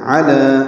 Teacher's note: عین وسط حلق سے ادا کریں گے، لام کو 2 حرکات لمبا کریں گے